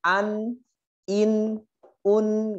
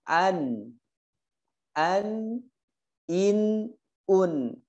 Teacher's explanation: An, karena dia memiliki sifat tawassut atau bainiyah, tidak ditekan, an tidak ditekan di hurufnya, tapi dimasukkan ke hidung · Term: izhar halqi